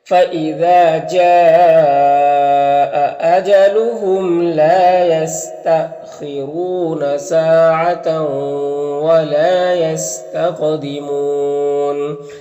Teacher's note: یہاں پر حمزہ ساکنہ ہے تو جھٹکا لگے گا · میں سے تو ادغام ناقص ہوگا، ولا میں الف مدہ ہے، یہاں پر قاف حروف مستعلیہ میں سے پر پڑیں گے، قاف میں قلقلہ کریں گے